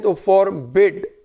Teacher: बिड पे stress आता है